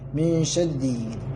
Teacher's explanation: Ra ini syiddah, syaddi. Tapi ra-nya dibaca tarkik atau tipis ditipiskan karena ra-nya berharakat kasrah